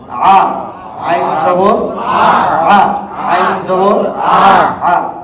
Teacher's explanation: কণ্ঠনালীর মাঝখান থেকে উচ্চারণ হবে, কণ্ঠনালীটা চেপে যাবে, আওয়াজটা চেপে যাবে